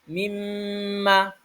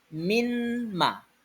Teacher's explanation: akan dibaca dengan memasukkan Nun ke dalam Mim mimma aslinya adalah minma tapi karena setelah huruf nun bertemu dengan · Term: idgham